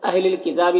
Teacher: تا میں کھڑا زبر ہے، ایک الف کی مقدار کھینچ کر پڑھیں گے